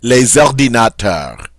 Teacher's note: And notice, because this word does start with that vowel, and even if it did start with an H, I'd still do this. I get to make the liaison between the S and the O.